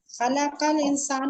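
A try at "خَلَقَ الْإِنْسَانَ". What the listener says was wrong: इंसान ना, इंसान पर जबर आएगी क्योंकि उस पर काम हुआ है, उसको पैदा किया गया है।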